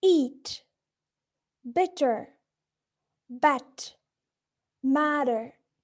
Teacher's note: These vowels are all produced in front positions with slight variation in their backness. In addition, there are other criteria that separate these vowels, being quality, or the vowel height, and quantity, the vowel length. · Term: front vowels